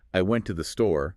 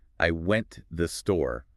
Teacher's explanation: >> We stress the important words, the nouns, the verbs, the adjectives, and we kind of crush the unimportant words, the prepositions, the articles together. >> So a sentence like I went to the store written on a page sounds like I went the store when spoken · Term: connected speech